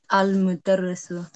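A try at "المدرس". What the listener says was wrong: Yeah, very good. Thank you very much.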